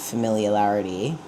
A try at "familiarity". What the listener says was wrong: You're putting an extra L in there, but that's fine.